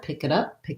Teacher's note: And then the reason I wrote a D there instead of a T is that when I link the word it to the next word starting with a vowel, it becomes a flap T, and it sounds more like a D. And again, I can either think kid or I can think kid up, and that way I run it all together, pick it up, and I can move between those sounds more easily.